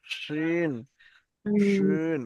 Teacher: জিভের মাঝখানটা উপরের তালুতে লাগান